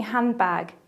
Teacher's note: Elision is when sounds disappear in fast speech, like the example of handbag, where the d sound disappears.